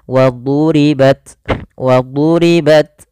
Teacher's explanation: Jangan dibaca waduribat, nanti huruf dal, tapi dia huruf dha. Wadu ditebalkan huruf dha-nya